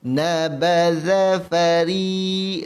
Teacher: Ri baris bawah, ra baris bawah nipis.